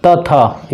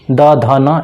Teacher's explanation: त थ ये दोनों हो गया अघोष, लेकिन द ध न ये हो गया आपका घोष